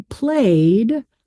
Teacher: if I say played, I'm going to pronounce that ed suffix as just d